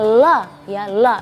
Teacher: dari pinggir ujung lidah bertemu gusi muka yang atas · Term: huruf lam